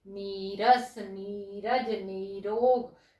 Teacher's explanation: विसर्ग के बाद अगर र हो तो विसर्ग का लोप हो जाता है और पूर्व स्वर दीर्घ हो जाता है। नियम के हिसाब से समझ में आया बच्चों, ये विसर्ग फिर से बता रही हूँ, ये विसर्ग है, इसके बाद र है, इसका मतलब इसका तो हो गया लोप, और जो ये क्या है हमारी ई है, ह्रस्व ई है, वो दीर्घ में परिवर्तित हो जाएगी।